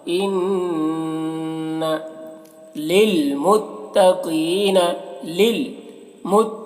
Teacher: लिलमुत्तक़ीन क़ौफ को मोटा करते पढ़ते हैं। · इन्ना नून मुशद्दद है तो गुन्ना हो रहा।